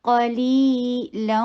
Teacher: تو یہ یا ساکنہ آ رہا ہے، اس سے پہلے کسرہ ہے، تو یہ ٹو حرکہ لانگ ہوگا۔ قلیلا، لام کے اوپر فتحتین، واو کے ساتھ مل رہا ہے، ادغام بغنہ ہو رہا ہے